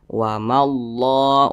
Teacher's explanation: ma tidak dibaca panjang karena di depannya ada huruf yang bertasydid. Nah, maka ma dibaca pendek.